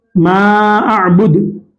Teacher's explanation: जज़म दे देंगे आखिरी में और कलकला करेंगे। मा अअबुद, पेश आ गया, पेश पर अगर रुकना है, मा अअबुद।